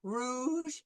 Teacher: Okay, so you will use like the English R rouge, which is the tongue is closer to the front of the mouth and the mouth is rounded